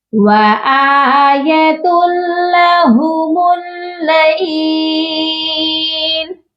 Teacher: یہاں پر ادغام بلا غنہ کیا جا رہا ہے، یہ پڑھا جائے گا وَآيَةٌ لَهُمُ اللَّيْلُ، لہم کی جو میم ہے اس کو ڈائریکٹ لام کے ساتھ ملانا ہے، لام مشدد کے ساتھ، اور درمیان میں خالی الف ہے اس کو ہم نہیں پڑھیں گے۔ · ملا کر پڑھتے ہیں لیکن غنے کے بغیر ملاتے ہیں